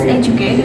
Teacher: Like the words educate, we have 3 syllables. The stress occurs on the first syllable.